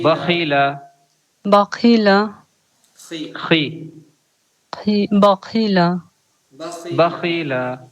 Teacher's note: ایسا محسوس ہونا چاہیے کہ گلے میں کھرکھراہٹ ہو رہی ہے